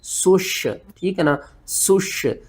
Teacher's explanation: سین کو سیٹی کے ساتھ پڑھنا ہے، شین کے اوپر آپ نے سختی کرنی ہے۔